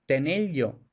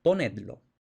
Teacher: Se asimila la consonante final de un infinitivo, es decir, una R, o de un imperativo plural, es decir, una D, con la consonante inicial del pronombre enclítico. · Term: asimilación de R más L